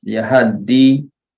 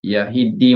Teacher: Ada yang baca baris atas jelas Yahadi, ada yang baca dengan ha baris bawah Yahidi macam has tu, dan ada yang ya baris bawah yi Yahidi.